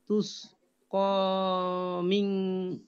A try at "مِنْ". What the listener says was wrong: মিনে গুন্না না এটা।